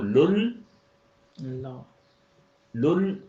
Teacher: اگلے لام کے اوپر شد ہے تو وہ 2 دفعہ بولا جائے گا.